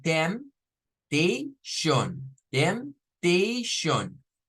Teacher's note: la palabra temptation, que la P es la que no suena. O sea, solo debemos decir temptation, temptation.